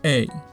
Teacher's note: begins with your tongue near the mid front of your mouth a little bit above /ɛ/ and then rises towards /ɪ/ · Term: diphthong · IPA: /eɪ/